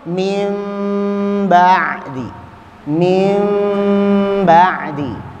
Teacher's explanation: Yang tadinya suara N menjadi suara M. Ya, yaitu apabila nun sakinah atau tanwin bertemu ba, satu huruf saja, suara N-nya berubah jadi M. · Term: Al-iqlab